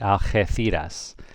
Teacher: The G is like an H, so it would be pronounced Algeciras, Algeciras. Remember the C becomes a TH in Spain if an I follows it